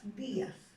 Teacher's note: Vocal cerrada, tónica, porque lleva la mayor fuerza de voz, y vocal abierta, átona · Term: hiato acentual